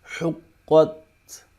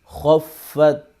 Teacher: قاف اور خا کو موٹا کر کے پڑھیں گے